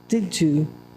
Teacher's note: I've actually changed the sounds I've gone from a duh and a year to a ja